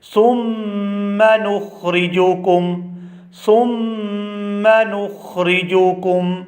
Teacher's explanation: یہاں جو میم ہے وہ میم مشدد ہے، تشدید کے ساتھ ہے اور یہاں پر بھی غنہ زمانی ہوگا اور ہم اس کو بھی 2 سے 3 سیکنڈ کھینچ کر ادا کریں گے